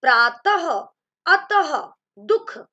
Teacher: इसका उच्चारण हम कैसे करते हैं, ह के रूप में। विसर्ग को हम लिखते दो बिंदियों के रूप में है, लेकिन उसका उच्चारण कैसे होता है, ह के रूप में